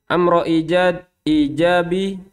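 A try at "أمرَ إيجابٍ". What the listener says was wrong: Tanwin.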